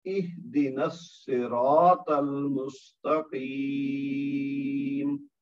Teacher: سرا میں را کے بعد الف مد ہوا ہے تو 2 حرکت تک کھینچ کے پڑھنا ہے اس کو